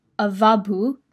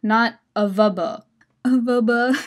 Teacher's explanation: The middle A should be a long vowel ah not uh